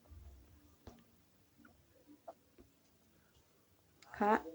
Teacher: K dikeluarkan dengan mengangkat pangkal lidah di depan posisi huruf Qof disertai dengan mengalirnya nafas